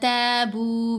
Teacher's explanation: تا کو لمبا کریں گے، ساتھ الف ہے نا، زبر کے ساتھ الف ہے تو حرف مدہ ہے، با کو بھی لمبا کیا، واو مدہ آ گئی۔